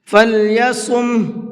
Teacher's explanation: صاد کو منہ بھر کے پڑھیں گے۔